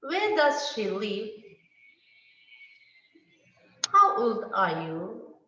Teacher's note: the unstressed syllables start rising immediately after the fall